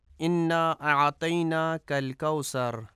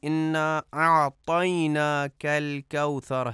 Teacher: الکوثر میں ثے کو سین پڑھا جاتا ہے، انا اعطیناک الکوثر، یہ درست نہیں ہے، جبکہ درست ادائیگی انا اعطیناک الکوثر ہے۔